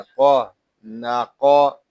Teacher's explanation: نون زبر نا، قاف زبر قا، ناقا۔ قاف حروف مستعلیہ میں سے ہے، اس کو پوری یعنی موٹا پڑھیں گے